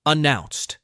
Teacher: Notice how announced has two syllables with stress on the second. Announced. When you repeat it, make sure to stress the same syllable.